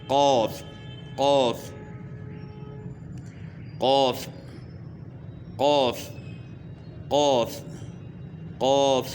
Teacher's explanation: دو نقطوں والا جو قاف ہے اس کا مخرج یہ ہے کہ زبان کی جڑ کا وہ حصہ جو گلے کی طرف ہے، یعنی زبان کی جڑ جہاں ختم ہوتی ہے آگے گلا شروع ہوتا ہے، وہاں وہ اس جگہ کو اوپر تالو کے ساتھ لگائیں گے تو موٹا قاف ادا ہوگا